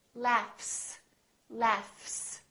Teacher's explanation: There's no vibration in my vocal cords. So, the F is actually a voiceless sound. So, that means the S that follows it will also be voiceless.